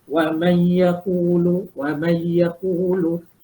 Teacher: Tapi kita baca wa may yaqulu wa may yaqulu, kita masuk tapi tak dengung